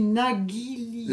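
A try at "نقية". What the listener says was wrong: Là, ça passe pas. C'est naqi. Tu peux pas le remplacer avec le gars. Negilia, ça se dit, mais c'est très ancien d'Arija. C'est très ancien et tu risques que tu te fais pas comprendre. Et c'est un peu très paysan.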